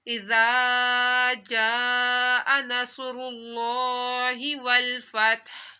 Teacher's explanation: ہا کے اوپر جو پیش ہے وہ ساکن ہو جائے گی، جب رکیں گے تو پیش نہیں پڑھی جائے گی